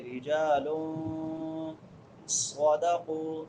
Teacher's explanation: تنوین کے بعد صاد ہے، حروف اخفا میں سے صاد ہے تو یہاں پہ اخفا کریں گے